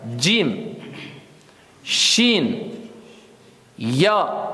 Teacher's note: Tu vas coller ta langue au palais, mais le milieu de la langue.